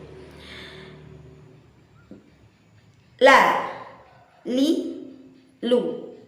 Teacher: lam itu dikeluarkan melalui sisi lidah bagian depan. Sisi lidah bagian depan, benar-benar tepi lidah, benar-benar pinggir lidah bagian depan yang julur dan mengenai ke gusi gigi seri atas, bukan mengenai pada langit-langit. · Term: huruf lam